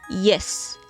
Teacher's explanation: Here the front of the tongue is the active articulator and the hard palate is the passive articulator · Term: palatal